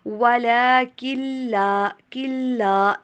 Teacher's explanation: نون کی آواز کو آپ اسکپ کریں گے، ڈائریکٹ کاف کو لام کے ساتھ ملائیں گی